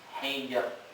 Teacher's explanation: Tarkik atau tafkhim? Tarkik, didahului kasroh. Berarti rohnya tipis.